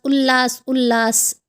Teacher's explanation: त के बाद ल होगा तो आधा ल और पूरे ल की ध्वनि पैदा करेगा। उत्तलास उतलास उतलास उल्लास उल्लास, आवाज़ आ गई।